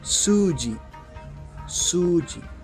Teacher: la pronunciación de shi cambia a ji